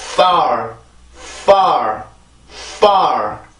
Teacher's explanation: 자, 그러면 지금 앞에 보면 이렇게 그 입술과 아랫입술과 윗니 사이에서 생기는 그 공기의 흐름, 이 무성음이기 때문에 공기만 나오죠. 그래서 침도 튀고 그리고 입술도 움직이고 그 공간을 통해서 나오는 소리에서 만들어지는 소리가 있어요. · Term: F 발음